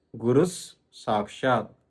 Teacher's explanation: విసర్గాన్ని పొల్లుస గా పలకాలి పొల్లుస అంటే హాఫ్ సగం స అప్పుడు గురుహు ఏమవుతుంది గురుస్ మొత్తం కలిపితే గురుస్ సాక్షాత్ గురు సాక్షాత్ అందుకే